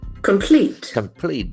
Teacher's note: There are two syllables accent falls on the second syllable